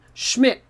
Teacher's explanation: this is a german name and it sounds like schmidt so the s c h sounds like sh the m is there and then dt just sounds like a t